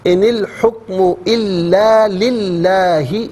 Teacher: لام سے پہلے والے حرف لام کے نیچے زیر ہے تو اس حرف لام کو یعنی اس میں اللہ کی حرف لام کو باریک پڑھیں گے